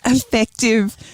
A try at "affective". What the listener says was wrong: Yeah, so just to be clear, it's not effective as in effective meaning it's effective and it gets things done, but rather affective. Just need to clear up the pronunciation.